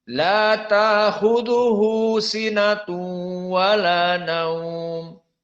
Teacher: di sini sinatu wala naum berbeda dengan qiraah hamzah. Maka di sini idgham bi gunnah.